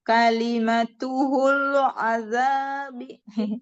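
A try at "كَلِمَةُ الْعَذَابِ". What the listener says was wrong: Jangan tambah ha. Kalimatul, bukan kalimatuhul. Kalimatul azab.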